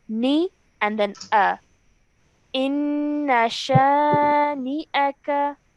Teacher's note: the noon and the hamza are separate. Yes, we can see that noon has a kasra and the hamza has a fatha. So when we say it, do not merge the 2 sounds together.